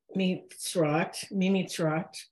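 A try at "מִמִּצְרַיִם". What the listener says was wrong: Mitzrayim. Don't shortcut the words. Mitzrayim. Take every syllable.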